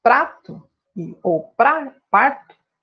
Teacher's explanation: EU TENHO O MESMO SOM DE TEPE, EM UMA PRONÚNCIA PAULISTA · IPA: [ɾ]